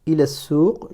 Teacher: Je suis passé du la ici directement au sin portant la shadda et la dhamma. Pourquoi? Parce que l'article, dans un mot commençant par une lettre solaire, l'article ne se prononce pas en cas de liaison.